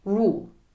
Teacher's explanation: when you say the word rule you do not put an i sound in front of the o you just say rule